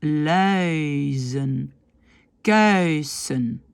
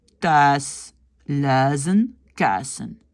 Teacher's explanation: beaucoup de flamands ne disent pas ce petit i et donc disent thuis, luizen, kuisen